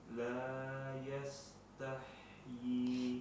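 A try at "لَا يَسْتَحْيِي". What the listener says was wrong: Kita tipiskan sedikit lagi sinnya.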